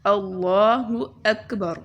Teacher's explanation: اللہ اس میں لام کے اوپر کھڑا زبر ہے اور لام موٹا پڑھا جائے گا